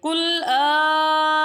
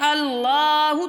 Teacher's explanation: قل اللہ، اور جب ہم اسے ٹچ کریں گے لام کے ساتھ، آ کو لام کے ساتھ ملائیں گے، تو اگر ہم اس طرح پڑھتے ہیں اللہ تو غلط ہو جائے گا، اللہ تو غلط ہو جائے گا، یہ دونوں طریقے غلط ہیں۔ آ کو تھوڑا دراز کرنا ہے اور لام کے ساتھ آہستہ سے ملانا ہے، جس طرح سے ہم اپنی انگلی کو کسی ٹیبل کے اوپر رکھ دیں اور فوراً اسے نہ ہٹائیں، تھوڑی دیر کے لیے رہنے دیں پھر اسے ہٹا دیں۔